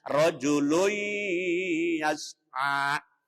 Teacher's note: Hukumnya dibaca idgham bi gunnah. Masuk dengan mendengung.